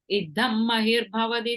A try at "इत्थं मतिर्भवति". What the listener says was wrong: Ittam mathir, this last line, second word, mathir, ta, okay?